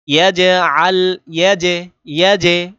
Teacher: আওয়াজটা ড্রপ খাচ্ছে, বাড়ি খাচ্ছে, এটাই হলো কলকলা